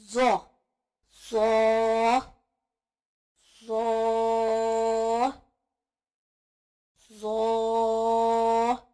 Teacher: زبان کی نوک جب سامنے کے دانتوں کے سرے سے لگے تو زو ادا ہوتا ہے. سا زال اور زو ان تینوں کا مخرج ایک ہی ہے، یعنی یہ تینوں حروف ایک ہی جگہ سے ادا ہوتے ہیں.